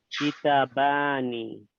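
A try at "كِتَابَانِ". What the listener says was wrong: But there's an alif here. I want to hear it.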